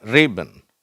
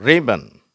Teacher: ரிபன் அப்ப ரி அப்படிங்கறத அழுத்தி வச்சிருக்கணும். · அப்போ ரீ அப்படிங்கிறத அழுத்தி உச்சரிக்கணும். இந்த பென்னுன்னு சொல்கிறத விட இதை கொஞ்சம் அழுத்தமாக உச்சரிக்கணும். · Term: ஸ்ட்ரெஸ்